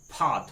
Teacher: फा थोड़ा सा फ्रिक्शन के तहत बोलना होगा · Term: आगत व्यंजन